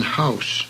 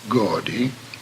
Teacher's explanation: au is a diphthong as in house and should not be pronounced as the English word gaudy